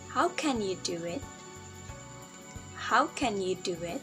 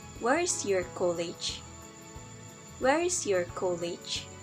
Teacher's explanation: all of this sentences use falling intonation · You can hear the fall tone in the end of the sentence.